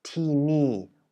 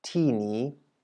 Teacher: you actually say ti ni with two falling tones, as opposed to what would be expected